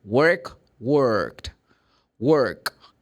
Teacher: there's no vibration of vocal cords you're going to have the Ed like T so worked